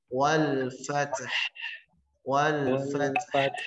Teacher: Huruf ta ada hamas, nafasnya mengalir. Yang kedua, huruf ha juga ada hamas, nafas mengalir disertai suara memanjang.